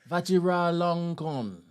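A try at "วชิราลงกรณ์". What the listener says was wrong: But that sounds like you're saying two different things. If it's got a flow in one word. Vajra Longkorn. Maha Vajra Longkorn.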